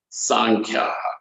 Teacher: the plural Sankhya will become Sankhyaha with an aspirate at the end, Visarga